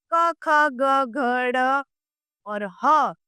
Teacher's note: ये कंठ से बोले जाते हैं। इन्हें कंठ्य कहते हैं।